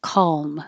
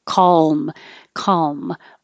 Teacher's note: You could make a dark L, calm, so the middle of your tongue goes up, and whether or not it totally touches the top of your mouth, calm is you can or you don't have to.